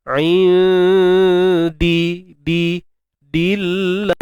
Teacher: Lam pada kalimah Allah kena baca dengan nipis. Sebab apa? Sebab sebelumnya terdapat huruf dal berbaris bawah.